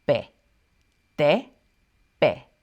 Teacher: And like the letter P in Spanish, it's less breathy